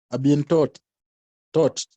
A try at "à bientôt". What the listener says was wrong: No, I'm asking you, are you pronouncing letter T at the end? Is it supposed to be pronounced?